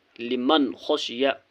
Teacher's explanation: نون ساکن کے بعد خا ہے، خا حرف حلقی ہے اس لیے نون ساکن کو ظاہر کرنا ہے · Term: اظہار